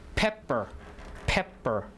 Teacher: the first p is aspirated so it's with an h on it and then the next p is unaspirated